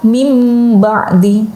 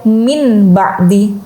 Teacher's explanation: Iqlab adalah nun sukun atau tanwin yang berubah menjadi bunyi mim.